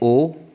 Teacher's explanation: जीभ का पिछला भाग होगा तो पश्च स्वर होगा।